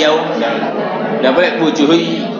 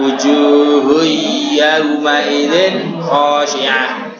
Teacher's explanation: Terus nanti wujuhui enggak boleh wujuhui yau enggak boleh wujuhui. Nah, kalau wujuhui yau nanti enggak jelas gunanya, maka perlu satu alif atau dua harokat